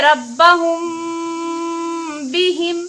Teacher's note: मीम साकिन के बाद बा आ रही है तो यहाँ गुन्ना के साथ इख्फा भी होगा